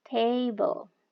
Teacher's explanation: first syllable lebih tinggi daripada second syllable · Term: stress